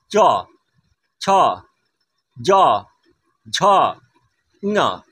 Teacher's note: সেই জন্য ঠিক তালুকে সোজাভাবে স্পর্শ করে বলে এদেরকে বলা হয় তালব্য বর্ণ। তালুকে স্পর্শ করছে।